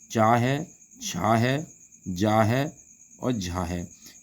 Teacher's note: इनका जो उच्चारण स्थान होता है इनका उच्चारण स्थान तालू होता है